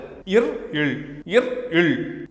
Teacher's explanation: இவை மேல்வாயே நாவின் நுனி தடவுவதால் தோன்றுகிறது